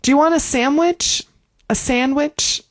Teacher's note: we're not really going to say sandwich with the D.